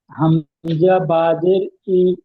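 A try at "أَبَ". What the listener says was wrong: জাবার, জের নয়, জের নিচে আসে, ওটা উপরে আসলে জাবার হয়, জি।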